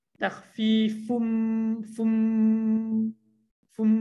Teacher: terus bunyi mim kan, dengung kat mim fum min. Okey. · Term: idgham